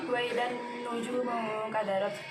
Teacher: Hukum bacaannya alif lam syamsiyah dan ada nun tasydid dibaca guna